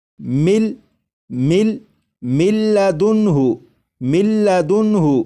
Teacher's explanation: یہاں پر جب ادغام کریں گے تو غنہ بھی نہیں کریں گے